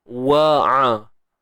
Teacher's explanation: Ain ni daripada tengah kerongkong kita. Wa'a. Pisahkan bunyi waw dengan a tu.